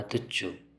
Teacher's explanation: ಹಿಂದೆ ಉಕಾರವಿರುವುದರಿಂದ ಕೊನೆಗೂ ಉಕಾರ ಬಂದು ತುಚ್ಚು ಎಂದಾಗುವುದು